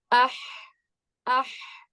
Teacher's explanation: اس کے بعد اگر ہم پڑھیں حمزہ ح زبر اح، اح، تو کیا پتا چل رہا ہے کہ ح جو ہے وہ کہاں سے ادا ہوتا ہے؟ حلق سے ادا ہوتا ہے. تو یعنی کہ جب آپ حرف کو ساکن کر لیتے ہیں تو اس کا مخرج زیادہ واضح ہو جاتا ہے.